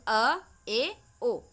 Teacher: अर्ध विवृत में आपका आने वाला है अ, ए और ओ, यानी मुंह जो है वो आधा ही खुलता है